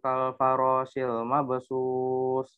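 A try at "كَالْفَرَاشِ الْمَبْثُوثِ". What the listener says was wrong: Kal farasil pakai shin. mabsus pakai tak.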